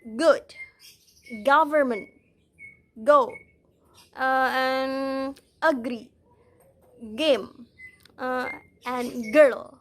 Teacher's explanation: it is called the voiced velar stop it means that you use the back of the tongue to